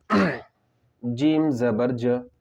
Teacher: جزاء، جیم زبر ج، جیم کے اوپر زبر کی حرکت ہے، زبر کی حرکت کو جلدی پڑھے، زبر کی آواز اوپر کو جاتی ہے